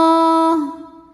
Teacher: alif lam menghadapi huruf Syamsiah yaitu huruf lam maka alif lam tidak dibaca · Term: alif lam syamsiah